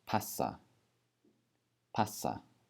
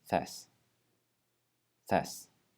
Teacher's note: we're just gonna hold that s sound for longer in each of those words